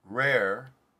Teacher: in my speech right now rare i would say that what i said was a turned r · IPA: ɹ